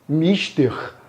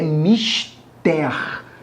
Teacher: a sílaba tônica é a última. Se a sílaba tônica é a última, diremos então que a palavra mister é uma palavra oxítona.